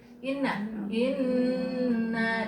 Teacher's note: Inna ditahan. Inna ditahan masukin ke hidung ya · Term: dengung